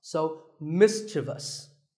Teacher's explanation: There is no I after the V. The last syllable is just vus